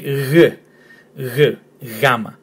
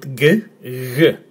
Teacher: but in Greece it's actually 'y', 'yamma'. Not 'g'.